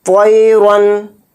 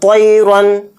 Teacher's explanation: طوا کو یہاں پر موٹا پڑھیں گے اور طوا کے ساتھ یالین بھی ہے تو اس کو جلدی پڑھیں گے